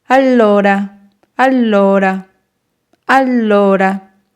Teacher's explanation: L, L, la sílaba que se alargará será lo.